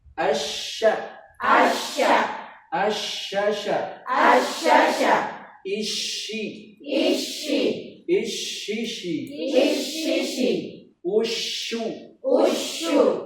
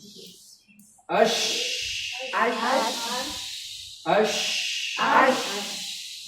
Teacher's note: Jadi dia punya namanya sifat berhamburnya suara angin pada mulut.